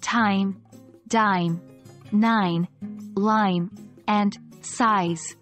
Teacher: made with the tip of the tongue touching the ridge just behind our upper teeth known as The alvear Ridge the sounds T D N L